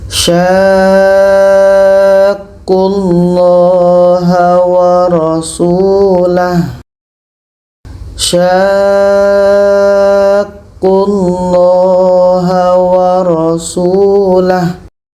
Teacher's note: Ini tanda mat, ini huruf yang ada tasydid. Jadi sya ini kita panjangkan 6 harokat baru masuk ke huruf yang ada tasydid.